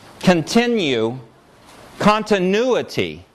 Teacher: syllables that have U as their nucleus and have ya in their onset lose the ya when they're stressed